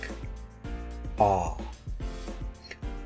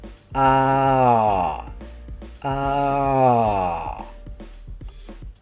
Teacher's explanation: Ah is very open and very far back. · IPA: /ɑ/